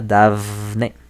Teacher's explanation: Por ejemplo, Dafne, tenemos una vocal, da, a, y le sigue una N que en español siempre es sonora. Entonces tendemos a producir esa F un poco sonora